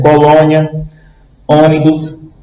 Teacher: acento circunflexo indica que a vogal tônica possui timbre fechado